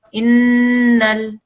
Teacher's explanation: you hold that in sound in your nose for 2 seconds before you join it to your next letter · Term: noon gunna